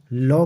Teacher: लॉ को पार्श्विक व्यंजन कहते हैं, और पार्श्विक व्यंजन का जो अर्थ है जीव के अगल बगल का जो भाग, इसका जो उच्चारण है जीव के अगल बगल के भाग से जो उच्चारण किया जाता है लॉ का।